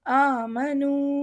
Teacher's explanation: پہلا الف پہ کھڑا زبر ہے، اسے ہم تھوڑا سا لمبا کریں.